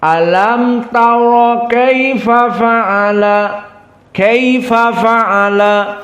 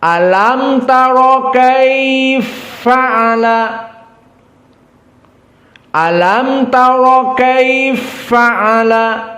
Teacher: ada idgham Adapun qiraah asusi an Abi Amr kaia dengan faala diidgamkan berarti Fanya satu dan dalam keadaan musyaddadah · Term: idgham alkabir, idgham al-kabir